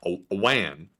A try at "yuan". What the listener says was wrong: It's a yuan. Yuan. Nah, man, you said wan. So it's a yuan.